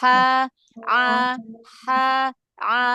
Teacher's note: huruf ha yang kecil yang sama makhraj dengan huruf ain